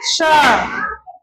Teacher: ये जो स है इसका नाम होता है तालव्य स। तालु से बोला जाता है ना, तो इसको बोलते हैं तालव्य स।